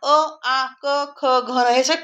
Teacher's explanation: कंठ म्हणजे गळा अ आ क ख कंठातून येतात त्यांना म्हणायचं कंठवर्ण